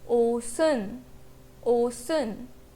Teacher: in the first syllable, the final consonant gets merged with the vowel following in the next syllable